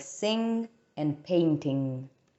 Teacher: the final consonant sound that we have is the velar nasal stop